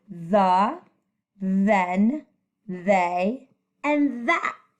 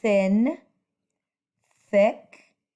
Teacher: because th has two sounds voice on and voice off